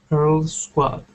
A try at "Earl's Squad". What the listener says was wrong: Yeah, so instead of saying Earl's Squad and stopping, okay, it is Earl's Squad.